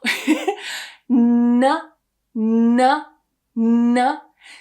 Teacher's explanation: I'm creating a block all at the front so that no sound can travel out of my mouth. The sound has to travel out of my nose. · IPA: /n/